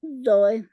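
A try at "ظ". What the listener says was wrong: जोए नहीं कहना, जो कहना है, जो तो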